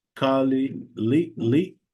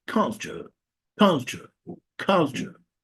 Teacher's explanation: The problem here is the insertion of a vowel between l and ch.